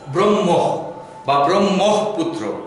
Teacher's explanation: এখানে খেয়াল রাখতে হবে ব্রহ্ম হবে না, কিন্তু ব্রহ্ম, অর্থাৎ মকে মহাপ্রাণ করতে হবে, মকে ধাক্কা দিয়ে বলতে হবে হ যুক্ত করে।